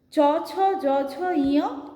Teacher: এইগুলো যখন উচ্চারণ করছি আমাদের জিভ কী করছে, তালুকে ছুঁচ্ছে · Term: তালব্য ব্যঞ্জন